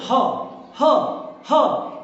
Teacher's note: हा जो है वो गले से भी कंठ से भी नीचे से उच्चारण होता है इसीलिए इसको काकल वर्ण कहते हैं काकल ह ह ह तो · भी जीव कहीं से टकराती नहीं है इसलिए स्पर्श रहित है उष्म संघर्षी ध्वनि भी है ह तो ऊष्मा निकलती है सघोष ध्वनि भी है और कंठ के निचले हिस्से से इसका उच्चारण होता है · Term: काकल्य वर्ण